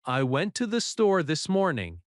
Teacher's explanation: The stress is on went, store, and morning. The small words are softer.